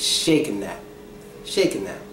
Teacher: when a word ends in ing and is followed with a word that begins with th, the G, the T, and the H disappear. All three of those letters disappear.